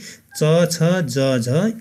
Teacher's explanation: उच्चारण अवयवहरू कहीँ न कहीँ छोइएर सास बाहिर निस्कँदा सासमा जोड पर्ने अथवा जिब्राले छुँदा घर्षण भएर उच्चारण हुने वर्णहरू स्पर्श सङ्घर्षी। त्यसो भए च छ ज झ स्पर्श सङ्घर्षी वर्ण हुन्।